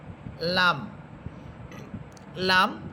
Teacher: জিহ্বার আগা উপরে তালুর সাথে লাগবে।